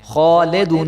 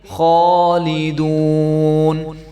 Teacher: لام کو لے نہیں پڑھیں گے بلکہ لی پڑھیں گے. جب لام کے نیچے زیر آ جائے گی تو کچھ لوگ جو ہے وہ گھروں میں پڑھے ہوتے ہیں تو وہ لے پڑھتے ہیں، لام زیر لے. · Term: لام زیر لی